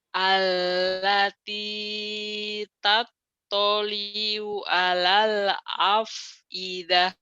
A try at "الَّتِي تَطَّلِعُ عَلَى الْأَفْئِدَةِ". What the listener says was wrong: Bukan tatoliu, tatoli'u ain ya, Bu, ya. Allati tattali'u 'alal, emang susah ain ya. Udah ain satu, ain kedua. Allati tattali'u 'alal afidah.